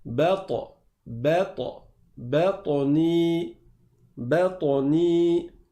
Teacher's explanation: il y a la qalqala, c'est-à-dire qu'on rebondit sur le ta. On ne bloque pas le ta.